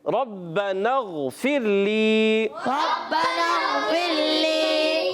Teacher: غین کو بھی پر رکھیں گے, غین میں کلکلا بھی نہیں کریں گے